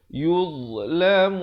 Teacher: Dhad makhrajnya sama macam huruf zal, ujung lidah dikeluar, tapi dia tebal lah.